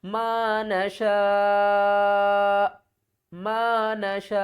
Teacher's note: شین کو کھینچ کر ہم نے حمزہ کے ساتھ ملانا ہے